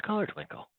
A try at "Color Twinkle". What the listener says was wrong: There's no T in that word. No T. T is silent. The T is silent.